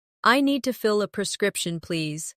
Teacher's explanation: Stress prescription, so it's clear.